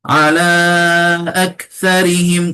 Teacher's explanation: kaf nak jaga apa hams dan syiddah